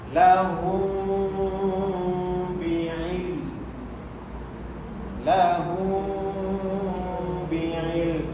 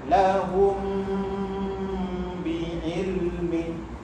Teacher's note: Mim mati bertemu ba. Bila bertemu dia akan ada dengung, tapi dia bunyi sama-sama. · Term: ikhfa syafawi